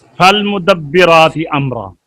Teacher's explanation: जी, फा का मखरज जी 14वां मखरज नीचे होंठ का शिकम सनाया उलिया के किनारे से मिले, इससे हाँ, फा निकलता है, इन्हें हरूफ शफिया कहते हैं।